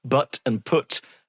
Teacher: But and put don't rhyme but they do for many people in Northern England.